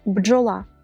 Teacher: таке уподібнення або асиміляція утворило сучасне слово бджола внаслідок занепаду єра дзвінкий б опинився поруч із глухим ч та перетворив його на його пару Дж